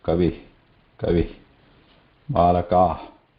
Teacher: The visarga is a release of breath following its previous swara. So when we say kavi, then just continue e and release the breath.